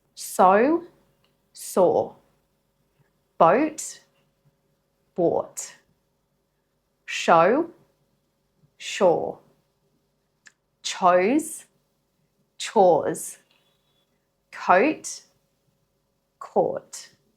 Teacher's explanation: These contrast O with the OR long vowel sound, as in caught.